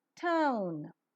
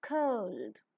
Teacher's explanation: the glide begins from central unrounded vowel between half close and half open position and moves towards the back rounded vowel just above half close position. The lips are unrounded at first and later become slightly rounded while the glide is pronounced.